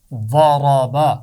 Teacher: پہلی 2 آوازیں موٹی ہیں، با کی آواز باریک ہے، ضاد اور را کی آواز کو موٹا پڑا جائے گا